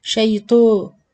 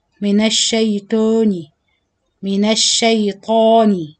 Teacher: Try to open your mouth, it's like you eating something, open vertically, and say طا with clear and strong sound, and not تو